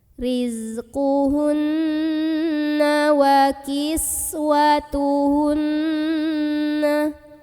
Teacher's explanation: Karena ada nun yang bertasydid. Maka cara membunyikan nun ini didengungkan, ditahan kurang lebih 2 harokat sampai kerasa getarannya ke hidung. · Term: gunnah musyaddadah